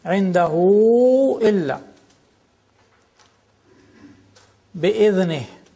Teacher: Indahu, you got here this waw, small waw, because indahu is long vowel, and then there is also madda, because it is long vowel followed by a hamza, by the next word.